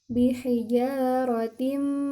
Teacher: ketika tanwin bertemu dengan huruf mim, maka dia gunnah. Bihijaratim, gitu, ditahan dulu.